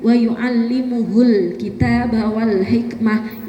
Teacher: Karena mungkin temponya yang agak kecepatan jadi mimnya kayak hilang.